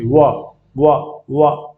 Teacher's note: देखो दांत में जीभ लगेगी, उसके बाद में ओठ की आपकी हरकत होगी। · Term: दंत ओष्ठ